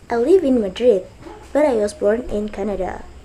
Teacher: falling tone is used in end of sentence